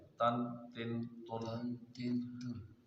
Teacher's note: زبان کی نوک سے، اوپر کے دانتوں کی جڑ سے نکالنا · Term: تا